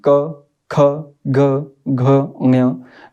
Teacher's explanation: हमारी जीवा का सबसे पिछला भाग कंठ में थोड़ी सी मूवमेंट करता है, हरकत करता है, यानी कि कहीं ना कहीं थोड़ा सा स्पर्श करता है हमारा।